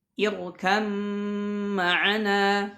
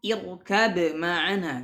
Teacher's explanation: Ba bertemu dengan mim, maka dimasukkan ke mim.